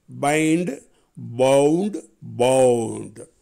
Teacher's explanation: பைல அதிரும் ஓசை கடைசியா டுல அதிரும் ஓசை